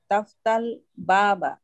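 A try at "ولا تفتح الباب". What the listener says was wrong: ওয়ালা তাফতাহিল, এই হাতে একটা ছান্দিক জের বসে যাবে, এই যে একটা ছান্দিক, তাফতাহিল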